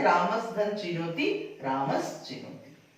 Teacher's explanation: दंत स के बाद यदि च वर्ग आता है तो ये दंत स तालव्य स में बदल जाता है